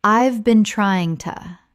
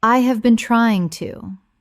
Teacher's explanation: But look at a phrase like I have been trying to. When spoken naturally, the h in have often disappears and the words run together.